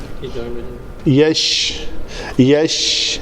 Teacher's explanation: یہ اس میں تفشی کی صفت ہے، شین کی آواز جو ہے نا بڑی کلیئرلی آنی چاہیے